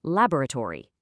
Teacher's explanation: a British speaker, they'll stretch it right out into four syllables, laboratory.